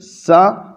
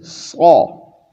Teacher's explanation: ورنہ کیا ہے، مخرج کیا ہے، دونوں کا ایک ہے، دونوں کا مخرج ایک ہے، ایک ہی جگہ سے ادا ہو رہا ہے. لیکن صرف سین پتلا ہے، صاد موٹا ہے.